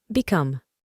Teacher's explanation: la O tiene un sonido más abierto, similar a una A en español